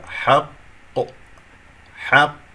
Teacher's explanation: إذا طبعا إذا أردت أن أقف على كلمة حق للاختبار سوف أقف بالقلقلة الكبرى، لأنه لدينا قاف مشددة بكسر، قاف ساكنة ثم قاف مكسورة. القاف الثانية هو الذي سيحدث فيها القلقلة، وقلقلة كبرى لأنه سأقف عليها في آخر الكلام